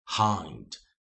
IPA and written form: haɪnd (hind)